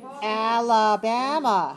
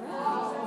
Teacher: 4 syllables. Where's the stress? On 3. So 4-3. 4-3 is our syllable stress code.